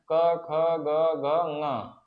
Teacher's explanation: कंठ मतलब कंठ जो है यहां गले के पास यहीं से इसका उच्चारण स्थान होता है।